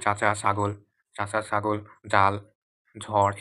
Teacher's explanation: জিহ্বার ডগা খানিকটা প্রসারিত হয়ে কি শক্ত তালুর সাথে আম স্পর্শ হয়ে কি বায়ু বাধাপ্রাপ্ত হয় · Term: তালব্য ধ্বনি